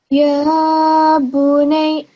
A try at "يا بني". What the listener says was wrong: Yeah, but you have to pronounce it slightly more because there's still the shadda is still there. Even if this fatha goes away, shadda is still there. Ya bunay.